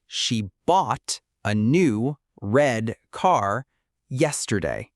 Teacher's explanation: The stressed words are bought, new red car yesterday.